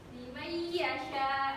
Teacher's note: Di sini ada tanda limayyasha. Jadi huruf nunnya dimasukkan ke dalam huruf ya-nya. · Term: idgham bi gunnah